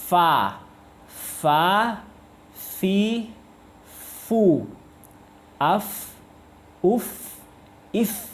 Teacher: bibir bawah bertemu dengan gigi atas, tapi bibir bawah bagian dalam ya, bukan bagian luar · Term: huruf fa